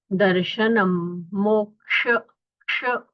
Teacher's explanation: ये जो क्ष है उसमें ककार और शकार दोनों का उच्चारण सुनाई देना चाहिए।